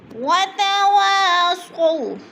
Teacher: وا کے اوپر الف مدہ، وتوا کی الف کو ایک الف کے برابر کھینچ کر پڑھنا ہے۔